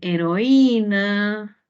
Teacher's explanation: Usted ve una vocal abierta con una cerrada y la cerrada tiene la mayor fuerza de voz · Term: hiato acentual